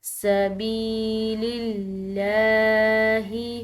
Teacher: سبیل اللہ، سبی، با کے بعد یا ساکن آ رہی ہے تو ایک الف کی مقدار اس کو بھی کھنچاؤ کے ساتھ پڑھیں گے، اور لفظ اللہ کی لام جو ہے وہ یہاں پر باریک ادا کی جائے گی کیونکہ پیچھے جو حرف آ رہا ہے اس کے نیچے زیر ہے۔